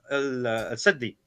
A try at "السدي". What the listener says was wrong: Again, here he mispronounces the scholar. Is not as-saddi, it's as-suddi, which tells me the ignorance here, because if he knew...